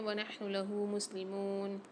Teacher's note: میم کے ساتھ واو ساکن 1 الف مقدار میم کو کھینچ کے پڑھیں گے